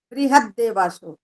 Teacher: ब्र पहले ही गलत हो रहा है, ब्र नहीं है, ब्री है ये